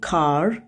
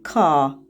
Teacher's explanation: Amma Britaniya ingilis dilisində R səsi sözün sonunda istifadə olunmur. Məsələn, Amerikan ingilis dili variantında car, R səsini eşidə bilirik, car. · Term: uzun A